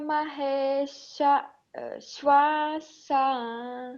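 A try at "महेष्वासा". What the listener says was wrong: Yeah, here we don't separate it. Maheswasa.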